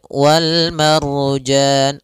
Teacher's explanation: ada ra sebelumnya fathah, maka dia ra tebal. Kemudian pada lafal jan ada bacaan mad arid lis sukun, yaitu mad yang kita baca dengan bacaan tebal.